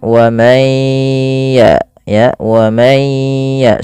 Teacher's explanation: Kemudian wa may ya wa may ya, sambil jangan lupa digunnahkan, masukkan ke rongga hidung sambil ditahan. Wa may ya, 2 harakat baru lepas. · Awalnya waman yakfur, ketika nun mati bertemu ya, caranya tidak lagi dijelaskan karena kita di sini terjadinya hukum tajwid berupa idgham bi gunnah. Masukkan nunnya ke ya